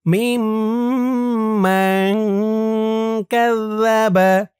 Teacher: এখানে আবার ইকফা গুন্না। নুন সাকিনের পরে ইকফার হরফ কাফ।